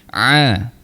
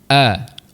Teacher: Ain tengah rongga kerongkong. Kita tekan sikit. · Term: huruf ain